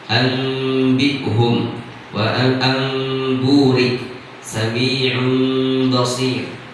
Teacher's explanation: Jadi ketika mempraktekkan iqlab, maka walaupun bunyinya seperti mim, tapi gunnah dan ikhfanya juga dinampakkan